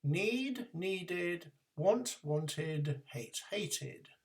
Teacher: For the past forms, we end in an extra sound d. Just before that, there is an extra sound I, which is needed to separate the d at the end of the word from the main verb.